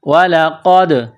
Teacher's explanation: قاف کو موٹا کرنا ہے، نقطوں والا قاف